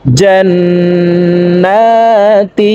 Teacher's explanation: তিন সেকেন্ড পরিমাণ গুন্নাহ করে ধরে রাখব